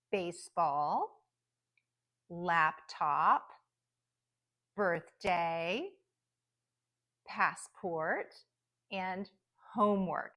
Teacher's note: laptop birthday passport and homework so all of those compound nouns the first word will be the primary stress and the second word will have a secondary stress